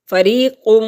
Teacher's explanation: یا ساکن سے پہلے لفظ کے نیچے زیر ہے تو یا مدہ ہے، ایک حرکت کے برابر اس کے کھینچنے کی مقدار ہے